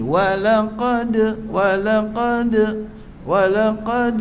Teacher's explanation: Qa qa turut tebal. Dal mati itu qalqalah sughra. Jadi lantunan kecil.